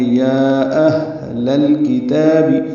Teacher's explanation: حمزہ اقصی حلق سے ادا ہوگا، اس میں صفت جہر کی ہے ، اور ہا سے ملائیں گے، ہا پہ ہمس ہوگا، لام